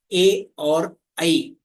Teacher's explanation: ए और ऐ ये जो संयुक्त स्वर है वर्णमाला के उनका उच्चारण स्थान कंठ तालु है